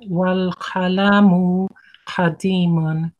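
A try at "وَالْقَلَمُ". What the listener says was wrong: you're still saying al-qalamun. You're pronouncing an alif in qalamun. It's wal-qalamu, wal-qalamu, and also the pronunciation of the letter qaf.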